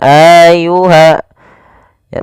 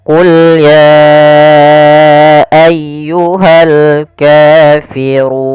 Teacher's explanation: Maka apabila ada kata ya ayyuha, biasanya kita sebut dengan bacaan mad jaiz munfasil yang kita panjangkan sepanjang 4 harokat. Kemudian pada lafal ayyuhal kafirun ditekan ya-nya. Qul ya ayyuha, jangan ayyuha ya, tapi langsung saja qul ya ayyuhal kafirun.